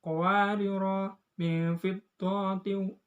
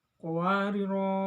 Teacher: apabila membaca dilanjutkan, dibaca pendek, dan apabila berhenti, dibaca panjang.